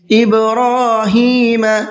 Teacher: با کے اندر قلقلہ کریں گے، اس لیے کہ با حروف قلقلہ میں سے ہے اور اس کے اوپر جزم بھی ہے